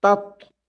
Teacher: پہلے تا زبان سے باریک نکلے اور ساتھ ہی جب تت کہیں تو موٹا نکلے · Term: تا باریک تو موٹا